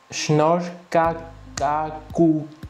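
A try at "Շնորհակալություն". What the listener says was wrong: Juste une petite correction sur la prononciation. Le R est un peu plus roulé et le Y à la fin est un peu plus doux. Donc ça donnerait quelque chose comme Shnor hakalutian.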